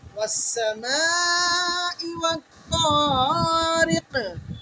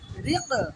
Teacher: কফ যদি আমরা কলকলা করতে মিস করি তাহলে কফ কিন্তু কাফ হয়ে যাবে, কফের উচ্চারণ কাফের মতো হয়ে যাবে। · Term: ওয়াজিব কলকলা